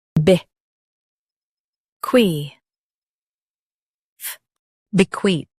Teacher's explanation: Stress KWEE and keep TH soft.